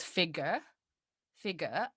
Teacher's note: typically like non-rhotic british accent would be without the strong r at the end of this word figure